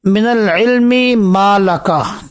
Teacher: میم کا ادغام میم کے اندر ہے، تو یہاں بھی ادغام کے علاوہ اختلاس بھی جائز ہے۔